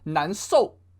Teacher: In his regional accent, he said 难受. He did not put the H to the S.